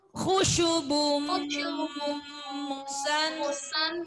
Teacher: bun ketemu mu, hilang n-nya langsung ke m